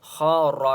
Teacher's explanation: خا اور را کو دونوں کو موٹا پڑھیں گے